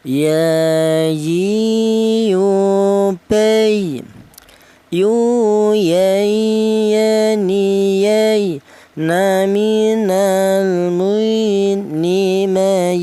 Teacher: huruf berasal dari tengah lidah ya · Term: huruf ya